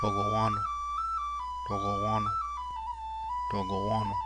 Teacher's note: This G is farther back in the throat.